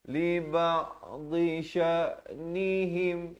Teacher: Fa idza sta'dhanuka li ba'dhi sya'nihim. Dhi di tepi lidah kita.